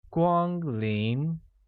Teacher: Arrive, in the presence of a guest, translates to 光临, which is pronounced with a high level tone on A, a mid-rising tone on I, making it 光临.